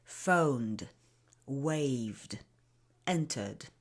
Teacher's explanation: The D is not a very clear sound, especially in connected speech, but it's still a D. No matter what you do, it will still be D.